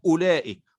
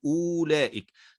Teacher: وكأنه غير موجود، فنقول أولئك ولا ننطق بالواو